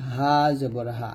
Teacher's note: করতে হয় হামজাটা হলকের শুরু থেকে উচ্চারণ হবে হামজাহ জবর আ হা টা হলকের শুরু থেকে